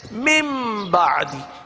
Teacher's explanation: نون کو میم سے بدل دیا جاتا ہے